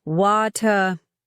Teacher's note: In British English, particularly in RP, they pronounce the T more clearly, wata. The vowel sound is different too, more open and back in the throat.